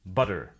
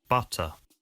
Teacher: in the US they sometimes sound like an Alvar tap instead of T an Alvar stop this normally occurs in an unstressed syllable between two vowel sounds